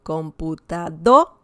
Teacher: we have here the stress on the second to last syllable it's not the last one it's the one before before that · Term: palabras graves